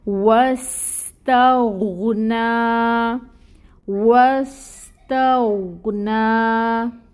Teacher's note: غین کی آواز ہلنے نہ پائے، اگر ہلا دیا غین کو تو قلقلہ ہو جائے گا